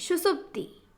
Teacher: सुसुप्ति में पहले दंत स फिर मूर्धन्य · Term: पहले दंत फिर मूर्धन्य